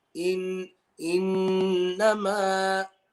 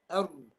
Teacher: Whereas the letter ra, r, there's no nose involved. Okay, there's no nasal sound, no khayshum sound whatsoever